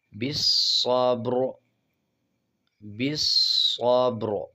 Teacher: با پہ قلقلہ کریں گے اور صاد کو مضبوطی سے ادا کریں گے، صاد پہ شد ہے۔